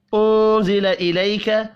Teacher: نون ساکن کے بعد حروف اخفا ہے, یہاں پر اخفاء حقیقی ہوگا · وما انزل وما الف کے اوپر چھوٹی مد ہے 3 الف کے برابر, اس کو بھی کھینچ کر پڑھیں گے. انزل نون ساکن کے بعد زا ہے, اخفاء حقیقی ہوگا